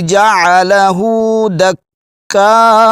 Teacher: قال هذا رحمت من ربی فَإِذَا جَاءَ وَعْدُ رَبِّي جَعَلَهُ دَكَّاءَ، آخر میں حمزہ ہے، اس کو جھٹکا دینا ہے، جھٹکے کے ساتھ پڑھنا ہے آپ نے۔ کاف پر شد ہے، آگے جو مد آ رہی ہے یہ مد متصل ہے، مد بھی کرنی ہے اور حمزہ کو جھٹکے کے ساتھ پڑھیں گے